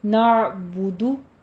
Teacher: نعبدو میں احتیاط کیجیے گا، عین کو وسط حلق سے نکالنا ہے پر اس پر قلقلہ نہیں کرنا، اور با اور دال کے اوپر ضمہ ہے، ہونٹوں کو گول رکھیے